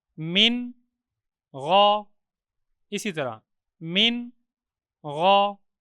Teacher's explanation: نون ساکن کے بعد حروف حلقی میں سے غین موجود ہے۔ تو یہاں پہ ہم نون ساکن کا اظہار کریں گے، یعنی نون کو ظاہر کر کے پڑھیں گے۔